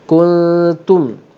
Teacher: Tum tidak dengung kerana di sini izhar syafawi. Tengok, kalau ada tanda mati atas dia bermaksud dia tidak dengung.